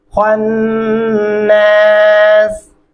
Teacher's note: خوا کو پر کر کے موٹا پڑھیں گے